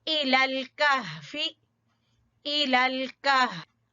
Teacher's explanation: अक्सा हलक से हा की अदायगी होगी, ठीक है, जो सीने की तरफ है।